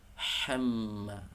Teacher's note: Jangan dibaca ha wamra'atuhu hamma, hamma, tapi yang pertama wamra'atuhu, yang kedua hamma, lebih nyaring suaranya, lebih tipis, lebih nyaring